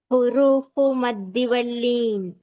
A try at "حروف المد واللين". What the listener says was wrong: Huruful, right? Huruful maddi, not huru. Okay, don't say huru. Ra should be heavy.